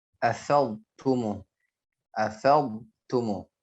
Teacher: Jelaskan huruf dhad ketika berhadapan dengan huruf ta. Sering dimasukkan dhadnya ke huruf ta. Ya. Dia bukan idgham.